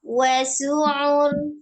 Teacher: huruf ainnya itu sifatnya juga dia tengah-tengah tawassut ya